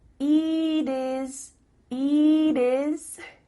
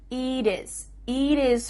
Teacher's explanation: the final T is changing to a d